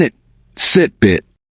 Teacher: your tongue rises and the mouth narrows like in it sit bit